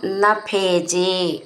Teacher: ഭേജ എന്നുള്ള വാക്കിന്റെ ഭേ എന്നുള്ള അക്ഷരം നന്നായിട്ട് ഊന്നി പറയാനുള്ളതാണ്